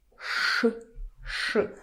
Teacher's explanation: Ж without voice turns to Ш.